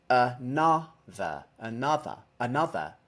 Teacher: The Vow uh well that word actually contains two uh vows there's an uh in the first syllable and an uh in the third syllable